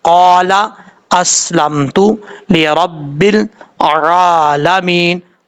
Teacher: آئین کو آپ نے مخرج سے ادا کرنا ہے، حمزہ کی آواز نہیں آنی چاہیے، آئین کی ہی آواز آنی چاہیے۔ یہاں پر یا مدہ 1 الف کی مقدار لمبا کر سکتے ہیں، اور جیسے میں نے آپ کو بتایا کہ مد عارض وقفی وہ بھی آپ کر سکتے ہیں، 2.5 الف کے برابر لمبا بھی کر سکتے ہیں۔